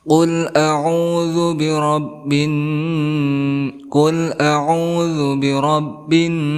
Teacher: nun yang bertasydid, maka di sini ada gunnah, disebut gunnah musyaddadah, artinya berdengung, dua harakat.